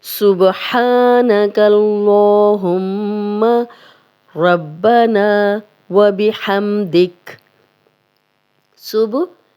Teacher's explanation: जब भी बा पे जज़म आएगी तो हम हिला के पढ़ेंगे। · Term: कलकला